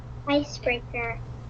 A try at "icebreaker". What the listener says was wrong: Very good. It's a long A sound. Woohoo! Way to go.